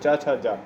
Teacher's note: तो जो चा वर्ग के व्यंजन होते हैं वो सारे स्पर्श संघर्षी होते हैं